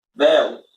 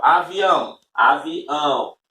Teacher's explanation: Aí você já sente que mudou o som. Mudou o som por quê? Porque parte deste som vai passar pelo nariz. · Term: nasal